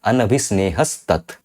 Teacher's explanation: So this is a Sakara Sandhi, Sattva Sandhi, due to which this Visarga is getting replaced by a Sakara, a Sa. Okay, so Anabhisnehaha Tat, they are combining as Anabhisnehas Tat.